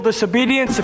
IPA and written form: ˌdɪs.əˈbiː.di.əns (Disobedience)